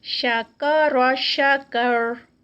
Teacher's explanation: شکر اس میں بھی شین کاف اور را اینڈ پہ موٹی ادا کی جائے گی